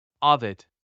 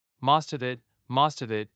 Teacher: We take the final consonant of the first word and attach it to the second word at the beginning. So instead of most of it, each were said separately, it becomes most of it. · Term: linking